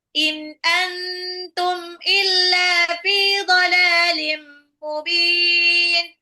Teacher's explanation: Antum nun sukun ketemu ta adalah ikhfa. Samarkan bukan antum tapi anum ditahan · In antum nun sukun ketemu alif itu adalah izhar, jelas. Antum nun sukun ketemu ta adalah ikfa, disamarkan, bukan antum tapi antum ditahan. Illa lamnya matabi'i 2 harakat, toladin lamnya 2 harakat matabi'i, tanwin ketemu mim adalah idgham bi gunah.